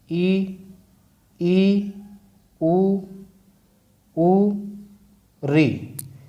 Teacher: इन स्वरों का उच्चारण करते समय हमारे मुख की स्थिति प्राय बंद सी रहती है, इसीलिए इन्हें संवृत स्वर में शामिल किया गया है।